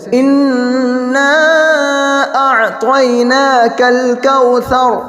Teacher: تو یہاں پر دونوں جگہ پر کاف ہے، کاف کو باریک کریں گے ، آخر کے اندر کوثر وہاں پر ہونٹ گول ہوں گے